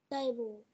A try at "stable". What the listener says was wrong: bàn không, cái bàn table nè, thì bây giờ có âm s đằng trước nữa là stable ha.